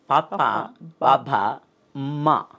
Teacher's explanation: పెదవిని ఓష్టము అంటారు కాబట్టి పెదవుల కలయికతో కలుపుతాం కాబట్టి దాన్ని ఓష్ట్యాలు అన్నారండి